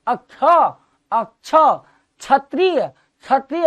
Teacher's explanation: जब इतनी उंगली घुस जाती है उसका उच्चारण स्थान मूर्धन्य होता है, और ये मूर्धन्य श है। अतः अक्ष के उच्चारण में याद रखना अक्ष किन दो वर्णों के मेल से बना है, वो है क और मूर्धन्य श